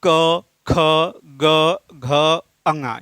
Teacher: तो क वर्ग का उच्चारण होता है कंठ से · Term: कंठ्य वर्ण